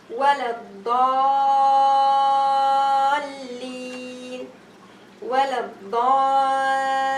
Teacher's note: I read it with 6 haraka elongation, no choice.